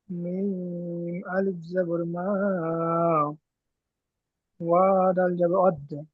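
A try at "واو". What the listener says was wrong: দাল হবে না, ওয়াও, ওয়াওটি, ওয়াও দাল জবর ওয়াদ।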